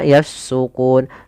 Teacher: Sedangkan pada lafal na yang di sini yafsukuna, dasarnya yafsukuna. Karena dia nun dimatikan maka yafsukun. Sebelumnya ada huruf waw yang dia huruf mad. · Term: sukun arid